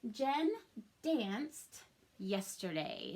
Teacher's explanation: Notice that danced, the ED makes that t sound.